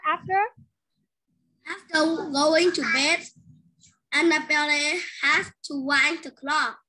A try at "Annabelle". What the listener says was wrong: Annabelle, ở đây không phải mình đọc, lắp đọc cái âm này là le đâu, mình sẽ đọc Annabelle.